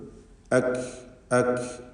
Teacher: അക് എന്ന് പറഞ്ഞാൽ മാത്രം മതിയാവുകയില്ല, ഷിദ്ദത്തുണ്ട്, കൂടെ ഹംസുമുണ്ട്